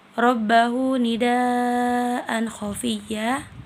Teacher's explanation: mad wajib muttasil karena terdapat mad tabi'i yang bertemu hamzah dalam satu kata. Cara membacanya panjang 5 harokat.